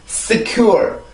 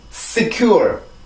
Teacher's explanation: 공간이 아주 짧기 때문에 그 작은 공간을 통해서 나오는 소리가 S예요. 그래서 어떤 분이 이 S 발음을 두고 총 같은 소리다라고 말씀을 해준 적이 있었는데 굉장히 적절한 표현이라고 생각이 돼요.